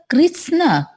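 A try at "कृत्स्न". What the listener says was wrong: Kritsna. Kritsna. Not Krishna. It is Dantasa. Krits.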